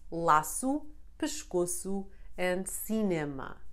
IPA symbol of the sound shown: s